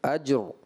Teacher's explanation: یہ را ساکن ہے تو اس میں کلکلہ نہیں کریں گے، پر کریں گے